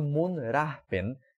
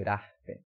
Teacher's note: O b virando p, desvozeada, e temos uma aspiração também